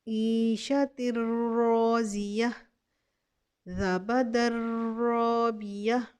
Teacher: نون ساکن یہ تنوین کے بعد را آ گیا، اب اس کو ہم بغیر غنہ کے ادغام کریں گے.